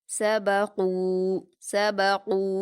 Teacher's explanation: قاف پر واو مدہ ہے، 2 حرکات کھینچ کر پر پڑھیں گے